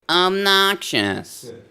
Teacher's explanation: when you spoke with that crabby thin tone, you raised your larynx